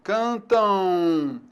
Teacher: a letra M em final de palavra e ela pode também produzir o som U